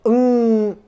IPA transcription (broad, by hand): ŋ